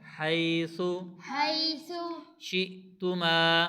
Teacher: حمزہ ہے جھٹکے کے ساتھ پڑھیں گے ، اور ما الف مدہ ہے لمبا کر کے پڑھیں گے